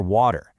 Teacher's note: In American English, that T often gets soft and turns into a duh sound, so you hear water.